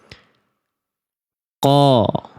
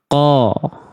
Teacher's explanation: Jadi huruf qof itu nih lihat pergerakan pangkal lidahnya seluruhnya nempel ke pangkal apa ke ee langit-langit lunak. Pangkal lidahnya nempel ke langit-langit lunak.